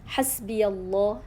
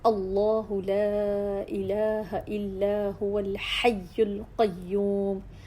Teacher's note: اللہ سبحانہ تعالیٰ کے اسم مبارک مفخم تفخیم میں پڑھا جا رہا ہے، پر کر کے پڑھا جا رہا ہے